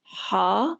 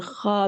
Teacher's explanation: ہا جو ہے وہ وسط حلق سے نکلتا ہے اور خا جو ہے وہ ادنی حلق سے نکلتا ہے